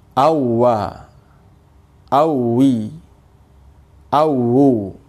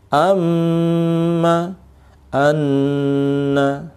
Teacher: Adapun mim tasdid dan nun tasdid itu ditahan, ada gunnah.